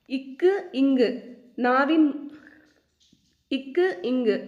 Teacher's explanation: நாவின் முதல் அன்னத்தின் அடி